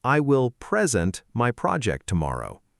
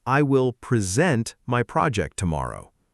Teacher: action equals stress on the second part